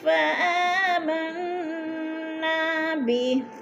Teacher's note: یہدی الی الرشد فآمنا بہ، یہدی الی الرشد فآمنا بہ، فآمن کی نون پر غنہ ہے، نون مشدد ہے، سختی سے جمع کر پڑھیں گے، اور نا کو تھوڑا سا کھینچیں گے، الف مدہ ہے